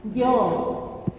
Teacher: yo ahí no estoy tapando la glotis, por decir yo.